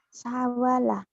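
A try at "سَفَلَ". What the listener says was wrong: Salah. Safala. Bukan wau fa ya.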